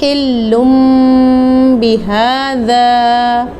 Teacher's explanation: یہاں پہ دیکھیں تو حلم بہذا، اس ورڈ میں لام کے اوپر تنوین ہے، تو اس تنوین کو میم سے چینج کر دیا جائے گا کیونکہ اس کے بعد با ہے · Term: اقلاب